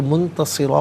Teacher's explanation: منتصرا اور وقف کریں گے تو منتصرا پڑھیں گے کہ دو زبر کی تنوین وقف میں الف سے چینج ہو جاتی ہے